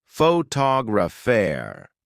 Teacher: in the word photographer, the stress is on the second syllable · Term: Word stress